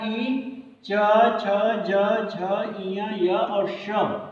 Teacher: इतने वर्ड जो होते हैं आपके तालु से बोले जाते हैं और इसका सूत्र होता है ई, चु, यशा नाम तालु।